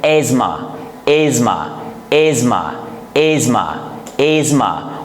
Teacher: this word TH is silent and we pronounce it asthma